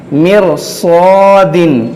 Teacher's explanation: फिरक़तिन, मीम रा ज़ेर मिर, साद अलिफ ज़बर सा, मिर सा, दाल दो ज़ेर दिन, मिर सादिन। इस रा को भी मोटा पढ़ेंगे क्योंकि मिर सादिन एक ही कलिमा है। अगर रा साकिन के बाद कोई और हर्फ होता, बारीक हर्फ, तो इस रा को बारीक पढ़ा जाता, क्योंकि यहाँ पर ज़ेर था, लेकिन इसको हुरूफ़ मुश्तालिया आने की वजह से इस रा को मोटा पढ़ेंगे।